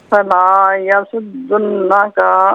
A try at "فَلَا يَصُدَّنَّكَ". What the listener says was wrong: فلا یصدنک، دال پر زبر ہے۔